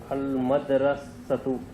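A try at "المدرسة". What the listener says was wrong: Correct.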